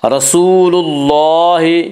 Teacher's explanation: رسول کے لام کے اوپر پیش ہے اس سے اللہ کا لام یہاں پہ پر پڑھا جائے گا.